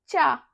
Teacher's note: हमारी जीभ है वो अपने तलवे को स्पर्श कर रही